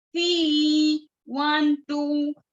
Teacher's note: فی کو کھینچیں گے 2 حرکات کے برابر